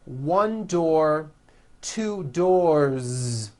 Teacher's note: 1 door, 2 doors, with a voiced Z ending.